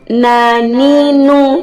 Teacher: selain keluar melalui ujung lidah mengenai gusi gigi seri atas juga dikeluarkan melalui rongga hidung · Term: gunnah yang paling sedikit